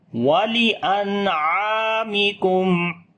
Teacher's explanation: عین کو لمبا کریں گے، الف مدہ ہے · نون ساکن کے بعد عین آ گیا، اظہار حلقی کریں گے